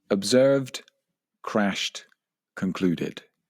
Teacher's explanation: For example, observed, crashed, and concluded, when in fact they should be pronounced observed with a d sound at the end, crashed with a t sound at the end, and concluded with an id sound at the end